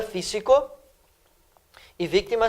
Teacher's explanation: Lembra que físico e vítima tem a terceira sílaba tônica. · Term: esdrúxulas